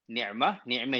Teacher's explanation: imalah ni sebenarnya adalah kita menyebut fathah tu, tetapi kita tak bunyi dia fathah secara jelas. Dia di antara fathah, ini yang pertama lah, di antara fathah dengan kasrah.